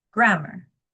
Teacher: the emphasis happens in the beginning of the word on the first syllable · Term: strong weak stress pattern